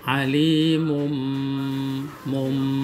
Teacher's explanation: iklab itu nun mati atau tanwin bertemu dengan huruf ba dan itu harus ditahan dengan ukuran panjang 2-3 harakat